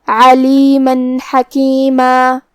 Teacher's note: حا حروف الاظہار میں سے ہے اور اظہار کا معنی ہے ظاہر کرنا، اور تنوین کی اصلیت نون ساکن ہے، تو ہم یہاں تنوین ظاہر کریں گے اور اسے نون ساکن پڑھیں گے اور بغیر غنہ سے یہ حکم کو ادا کریں گے